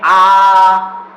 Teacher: बड़ा माने जिसके उच्चारण में क्या होता है, मुख, जिसके उच्चारण में मुख पूरा या बड़ा खुलता है, जिसके उच्चारण में मुख जो है पूरा खुलता है या बड़ा खुलता है, उसे क्या कहते हैं, विवृत्त।